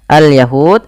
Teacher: alif lam qamariyah yang di mana Alif lamnya dibaca dengan jelas